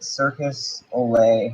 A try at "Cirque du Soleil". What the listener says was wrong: Bro, there's no S in that word. It's not circus, buddy.